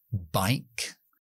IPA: baɪk